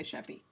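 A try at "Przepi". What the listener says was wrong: No, the P is there. It's actually Very much pronounced.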